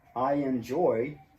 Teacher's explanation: don't worry if a little y appears in the middle of the eye and in joy that's natural